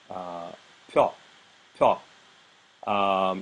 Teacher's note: the tiny hint of a glide which you might hear as the palatalized consonant, the palatalized soft consonant is released.